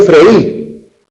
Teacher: No es yo freí, porque en freí el acento cae sobre la vocal cerrada, por lo tanto freí tiene dos sílabas. Pero frió, él frió, tiene una única sílaba.